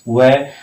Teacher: वह जब बोलते हैं तो हमारे दांत भी काम करते हैं और होठ भी काम करते हैं, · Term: दंतोष्ठय